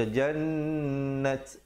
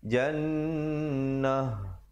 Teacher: Nun sabdu, jangan lupa hukumnya wajibul gunnah dan ta marbutah. Bila kita waqaf dia bertukar menjadi ha. Jadi kita tukarkan, jangan pula baca jannat, salah dia kena bunyi jannah.